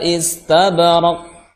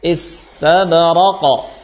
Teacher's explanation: karena dia disukun seharusnya qalqalah muncul, terdengar jelas maksudnya gitu